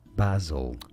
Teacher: So an emphasis on that first syllable and a ba sound.